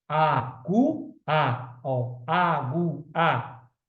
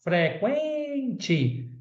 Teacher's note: o som aumenta, cresce do menos para o mais forte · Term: ditongo é crescente